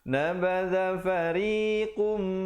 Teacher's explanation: ri menjadi nipis di situ 2 harakat